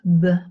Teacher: this is a voiced bilabial plosive